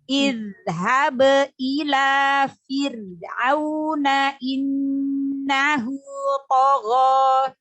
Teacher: Zalnya dialirkan suaranya ya. Zal sukunnya.